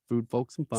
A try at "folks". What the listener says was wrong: Stop saying the L so much in folks.